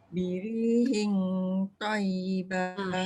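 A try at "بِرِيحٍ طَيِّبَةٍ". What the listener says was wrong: Hing tu dia kena bunyi dengung tu jangan belakang tau. Dia dekat tempat keluar to depan. Birihin to.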